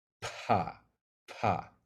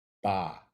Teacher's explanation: When you say pa, the reason you feel that puff of air coming out your mouth is because your vocal cords haven't started vibrating until after your mouth is opened. And the reason you feel that puff of air is because the air goes through your lungs, it clears the vocal cords because they're not involved yet, and comes out your mouth.